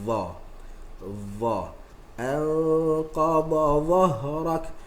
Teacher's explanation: Adapun dha, maka tempat keluar dia adalah hujung lidah kiri dan kanan, haffah juga, tapi jumpa dengan gigi atas.